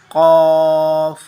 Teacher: قاف، اس میں زبان کا استعمال مخرج میں نہیں ہے، زبان اپنی جگہ پر سسٹین کرے گی، اور ہم گلے کے میڈل سے، قاف، گلے کے میڈل سے اس کی آواز نکالیں گے